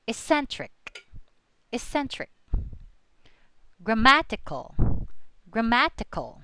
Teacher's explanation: The accent falls on the syllable just before suffix.